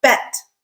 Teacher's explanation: If you notice, the sound in bet is flat, quick, really short.